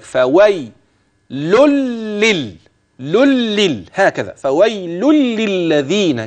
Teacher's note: من توال اللامات فويل ادي لام للذين ادي لام وبعدها ل هتجد اللام في للذين تشدد طبعا ما ينفعش يبدا بيها لكن التشديد على الوصل خلي بالك